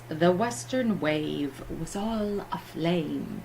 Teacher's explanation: the Western wave was all aflame repetition of that long a sound